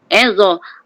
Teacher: Pangkal lidah kita ni terangkat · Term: huruf yang tebal